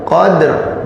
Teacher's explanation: Nah ini dalnya ini qalqalah, maka dia qalqalah sughra.